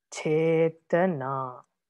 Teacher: You see, first one is heavy, last one is heavy, middle one is light.